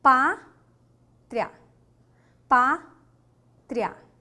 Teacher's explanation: você tem o i que é uma semivogal e você tem o a que é a vogal